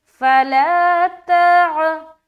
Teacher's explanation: تا کو عین سے ملانا ہے. تا کو عین سے ملاتے ہوئے ہماری آواز حلق سے آئے گی. عین کی ادائیگی صاف اور واضح طور پر کرنی ہے. · کھولتے ہوئے منہ پورا اوپن کرتے ہوئے آپ تا کو ادا کرتے ہوئے اپنی آواز کو عین کی مخرج یعنی حلق میں لے جائے